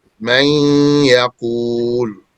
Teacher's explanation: When we say man yaqul, there's a ghunnah there. This ghunnah is the attribute of the noon, not the ya. And the ghunnah is preserved as evidence for the noon, which is now gone. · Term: merging the noon